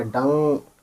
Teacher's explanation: डान नहीं पढ़ेंगे यहाँ पे, डां पढ़ेंगे है ना, नाक से आवाज़ निकलेगी डां और टे डांट।